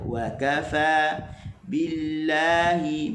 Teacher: Kaf dia tidak boleh ada angin begitu ketika dia berbaris